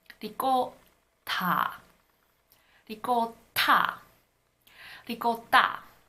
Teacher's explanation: When Italians say the word ricotta, they don't aspirate the T, but it's not a D sound either.